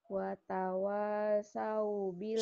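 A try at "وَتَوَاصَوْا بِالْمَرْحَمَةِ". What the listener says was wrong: so, marham. Jangan saw. So, ini hurufnya bunyi O. So.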